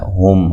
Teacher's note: ہا کو واضح اس کے مخرج سے نکالنا ہے جو کہ اقصی حلق ہے